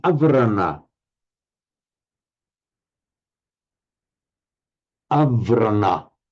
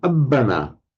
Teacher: with a preceding vowel, avrana, that becomes a double B in Pali, abbana.